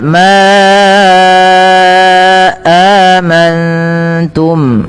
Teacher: panjangkan lafal ma sepanjang 4 atau 5 harakat karena ia ada mad jaiz munfasil.